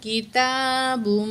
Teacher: یہاں تنوین کے بعد میم مشدد ہے، یہاں پہ ہم نے غنہ کرنا ہے، ادغام مع الغنہ ہے. تو یہ میم مشدد بھی ہے، اس وجہ سے بھی ہم یہاں پہ غنہ کریں گے.